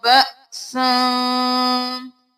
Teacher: हमजा है ऊपर जज़म है तो झटका होगा